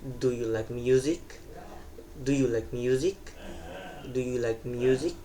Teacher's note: Jadi kayak intonation, yes or no question itu kebalikannya dari tadi yang falling intonation. Jadi yang yes or no question ini jadi kayak rising intonation atau enggak eh naik di akhir kalimat gitu. · Jadi nada suara akan naik pada kata music. Intonasi naik ini menunjukkan bahwa pembicara sedang menunggu jawaban tanpa tanpa intonasi naik.